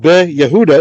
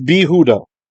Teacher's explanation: the shwa is going to disappear and we're going to get compensatory lengthening. That yod is actually going to become part of a long chirik.